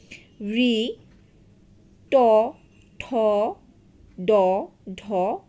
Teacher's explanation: যখন তোমরা এই ধ্বনিগুলো উচ্চারণ করবে তখন তোমাদের জিহবাটা এই তালুর অগ্রভাগ ভাগে চলে আসবে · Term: মূর্ধন্য ধ্বনি